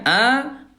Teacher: ketika fathah huruf ra tebal diangkat pangkal lidahnya